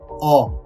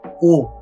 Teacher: To pronounce this third vowel, o, drop your jaw and say o. And to pronounce this fifth vowel, o, make a small circle with your lips and say o.